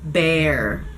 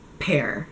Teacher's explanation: So, bear has the b with the vibration it's a voiced B-sound when you take off the vibration, it sounds like a p and it's just a puff of air.